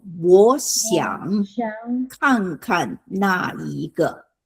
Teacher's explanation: Okay, 2 third tones together, so 我 becomes second tone.